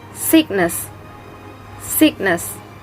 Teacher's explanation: The stress is located on the first syllable